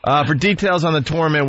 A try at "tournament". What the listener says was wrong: Tournament? That's kind of, you said, for details on the torment. I could see how that could slip out, though.